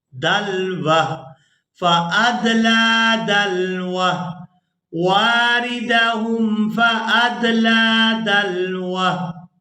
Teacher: तो यहाँ हमने वक़फ़ करना है तो वक़फ़ की सूरत में ये जो हा है ये साकिन हो जाएगी। वाव को हा साकिन के साथ मिलाकर अदा करेंगे दाल लाम ज़बर दल, वाव हा ज़बर वह, दलवह फ़अदला दलवह वारिदहुम फ़अदला दलवह।